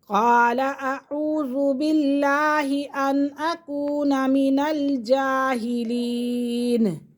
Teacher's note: اب یہ جو لفظ ہے نا، اعوذ، حمزہ کی آواز علیحدہ آئے گی اور عین کی علیحدہ